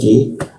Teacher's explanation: ki, lidahnya diturunkan sehingga rongga udara terbuka dan ada hembusan udara.